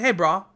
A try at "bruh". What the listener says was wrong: Bruh. No, that's you sound like a surfer. No, you keep saying bra, though. It's bruh. Yo, bruh. Like that.